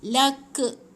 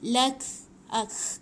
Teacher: kaf ni bila dia mati, dia macam ada bunyi angin yang terlepas. Tetapi dia bukan ada bunyi pantulan.